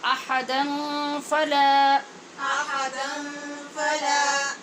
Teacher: یہاں دن کی جو تنوین ہے، نون تنوین، اس پہ ہم کیا قاعدہ پڑھ رہے ہیں؟ یہ اخفا ہے غنّے کے ساتھ